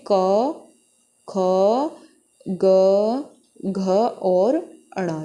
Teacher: यह हमारे कंठ से बोले जाने वाले व्यंजन होते हैं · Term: क वर्ग